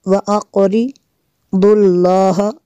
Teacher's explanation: لفظ اللہ عز و جل سے پہلے لفظ پر زبر ہے، اس کو ہم نے پر کرنا ہے۔